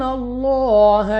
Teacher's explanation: Next ہمارے پاس لام آف اللہ ہے، اور لام آف اللہ سے پہلے حرف پر زبر ہے، تو اس لام آف اللہ کو موٹا پڑھیں گے یعنی منہ اور آواز کو کھول کر، اور اس کے بعد لام کو 2 سیکنڈ تک کھینچنا بھی ہے اس کھڑا زبر کی وجہ سے۔